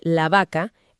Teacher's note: el sonido se suaviza porque quedó entre vocales